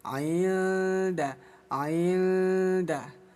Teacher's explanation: Jadi nunnya disamarkan sambil lisan masuk ke huruf dal. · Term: ikhfa